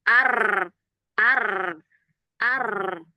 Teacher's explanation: maka hurufnya bukan ro tapi r. Takrirnya tebal berang gitu ya. Takirnya banyak banget gitu.